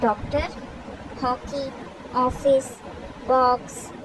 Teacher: इन शब्दों का सही उच्चारण बताने के लिए अक्षर पर चंद्रकार लगाया जाता है, इसे अर्धचंद्र भी कहते हैं। विविध अ का उच्चारण आ और ओ के बीच होता है